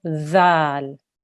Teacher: Make sure your tongue touches your top front teeth and make a th sound.